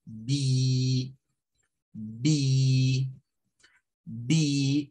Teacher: Este que está acá, que parece la I de nosotros, pero se distingue porque le ponen esos dos puntitos, es un sonido con la lengua un poco más arriba y como sostenido